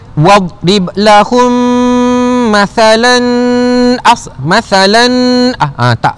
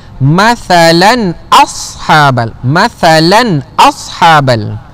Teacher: Hukum dia adalah izhar halqi. Izhar halqi dibaca dengan jelas. Tanwin itu tak perlu didengungkan bacaan. Jangan baca wadrib lahum mathalan tak, salah.